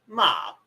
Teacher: tone number one long flat vowel